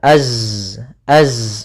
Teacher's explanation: dia punya sifat namanya rokhawah, sehingga melafalkannya yaitu tertahannya nafas dan juga mengalirnya suara